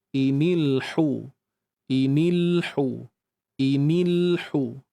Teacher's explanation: huruf ha baris depan ni ha pedas ni dia sama makhraj dengan huruf Ain kita kena sempitkan dia